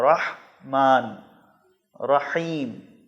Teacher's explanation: رحمان اور رحیم ان دو الفاظ میں ہا استعمال ہوا ہے، جو حلق کے درمیان سے ادا ہوتا ہے · اس کو گول ہا کی طرح ادا نہیں کرنا ہے، بلکہ حلق کے درمیان سے ادا کرنا ہے۔ رحیم اور رحمان نہیں پڑھنا ہے، رحمان اور رحیم پڑھنا ہے۔